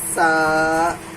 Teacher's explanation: زبان کی نوک ثنایا علیہ ثنایا سفلی سے مل کے سین ادا ہوتا ہے ، سا، سیٹی کی آواز